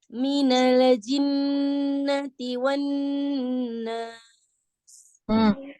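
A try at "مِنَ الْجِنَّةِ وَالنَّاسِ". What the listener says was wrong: Alif, alif. Lamnya, coba lamnya hati-hati jangan ada tawaludnya ya. Jadi jangan dilepas ya lidahnya dari makhrajnya.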